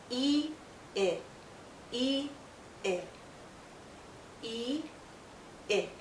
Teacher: go from tense to more relaxed e it e it and our mouth opens a bit more when we say it